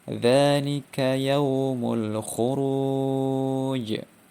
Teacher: Ini terjadi ketika huruf qalqalah berada di akhir ayat atau kalimat ya, yang langsung memantul, tidak atau tanpa ditahan terlebih dahulu. Contohnya dzalika yaumul khuruj ya, itu qalqalah wusta.